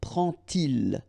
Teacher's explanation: And so this little d here is in red just to show you that you won't pronounce it like d to make the liaison, but you will pronounce it like t. And so you will get prend-il, okay?